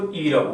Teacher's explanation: उच्च भनेको सबभन्दा माथि उठ्ने उच्च स्वर वर्ण भनेको इ र उ हो।